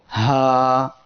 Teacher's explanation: হা অক্ষরের মাখরাজ হলো কণ্ঠনালীর শুরু হইতে হা উচ্চারিত হয়। কণ্ঠনালীর শুরু থেকে দুইটি অক্ষর উচ্চারিত হয়, হামজা আর হা।